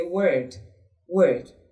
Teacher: we have the long ER sound the middle of your tongue is a bit lifted up to give you the sound